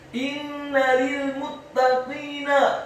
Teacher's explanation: Kata inna, huruf alifnya dibaca tipis, kasroh satu harokat, huruf nunnya ditasydidkan dengan gunnah atau dengung seperti mat atau panjang dua harokat. Setelah nunnya ditasydidkan, kemudian fathah satu harokat.